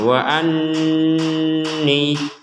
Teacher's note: Alaikum wa anni, jadi dibaca dengan jelas. Kemudian ada nun bertasydid di sini, kita membaca dengan dengungan. Wa anni, dengungannya ini sepanjang dua harokat.